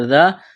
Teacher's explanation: الف سے پہلے زبر ہے، ایک الف کے برابر کھینچنا ہے حروف مدہ الف کی وجہ سے